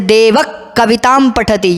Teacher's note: जिह्वामूलीय को कंठ के मूल भाग से उच्चारण करना पड़ेगा